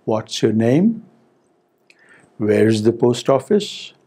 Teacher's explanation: the rising tone is also used for WH questions when they are asked warmly.